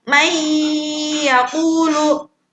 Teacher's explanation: contoh idgham bi gunnah yang harus dibaca ditahannya lama, dengung. Contoh dari huruf ya.